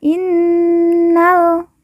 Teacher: Nun yang bertasdid kita baca ditekan ditahan dua harakat dan didengungkan